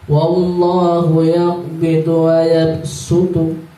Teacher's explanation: Ini bacaannya shad, hurufnya shad, tapi dibaca sin.